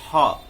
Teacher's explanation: हा कंठ से बोलते हैं, यानी कि जहां स्वर यंत्र है